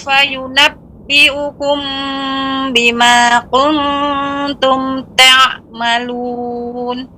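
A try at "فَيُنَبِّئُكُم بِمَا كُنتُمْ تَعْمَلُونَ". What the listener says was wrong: Ya, dibaca dengan kaf Ibu, tidak baca qaf ya. Artinya dibaca tipis. Bima kuntum.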